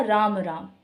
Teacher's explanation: तो जब मैंने बोला राम राम तो आप देख रहे हैं कि इसमें राम राम यानी कि इन दो शब्दों का जो खिंचाव है वो ज़्यादा था, अंतराल ज़्यादा था